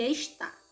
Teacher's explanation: da palavra está a sílaba tônica é o tá então ela é oxítona